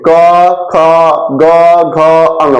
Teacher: मुंह खुला खुला रह रहा है, तो कंठ से बोल रहे हैं हम, एक कंठ है ना, कंठ से बोल रहे हैं, क ख ग घ अंग, मुंह खोल के खुला है, कहीं सब नहीं है, केवल कैसे कर क ख ऐसे बोल रहे हैं, नहीं, मुंह खुला के खुला है, क ख ग घ अंग, तो कंठ से बोल रहे हैं, मुंह के कंठ से बोल रहे हैं।